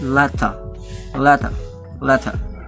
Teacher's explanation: also australians don't have the rhotic r